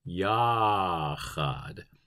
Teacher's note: the CH in Hebrew is very far back in the throat, much more like Bach than it is like the German ich, which is too far forward.